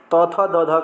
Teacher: त थ द ध का उच्चारण स्थान दंत्य से होता है